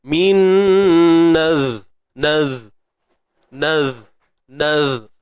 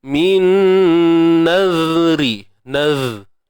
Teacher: fokuskan pada sifat rakhawahnya supaya tak tertahan suara